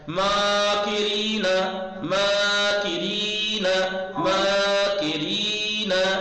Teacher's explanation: ماں یہ کشیدہ ہے، اسے کھینچیے، کاف کو مت کھینچیے گا